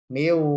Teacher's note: Nun sukun bertemu dengan wawu, ditahan.